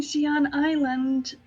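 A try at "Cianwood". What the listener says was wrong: Cyanwood. It's pronounced Cyanwood, for the record. I didn't hear the wood part.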